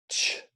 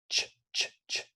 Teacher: It's actually a t sound with a sh sound. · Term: affricate